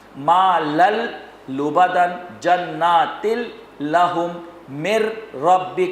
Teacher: مکس ہو رہا ہے، ادغام بھی ہو رہا ہے لیکن بلا غنہ ہو رہا ہے